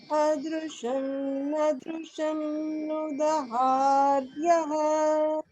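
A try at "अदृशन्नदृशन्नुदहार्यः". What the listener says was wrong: Very close. So you can just work on getting the initial as an upper swara.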